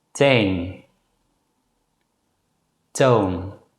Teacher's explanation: In general, this letter is pronounced as a voiceless consonant T. The Dutch consonant T is very similar to the consonant in the English word T, except that the Dutch consonant T has no aspiration.